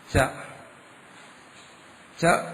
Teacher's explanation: ച ച എന്ന് നമ്മൾ ഉച്ചരിക്കുമ്പോൾ നാക്ക് എവിടെ ചെന്ന് തൊടുന്നു അത് തന്നെ താലു. അതിനാണ് താലു എന്ന് പറയുന്നത്.